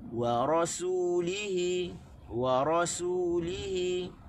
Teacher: Waw tak tekan, tekan di ra dan tekan di ha. · Kita tekan di ra, kita tekan di hi. Waw tak tekan. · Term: tekanan suara